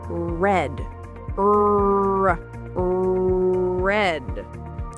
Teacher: But in English, we don't roll the R. We curl our tongue back a little. · My tongue curls back, but it doesn't touch the top of my mouth. It just floats there.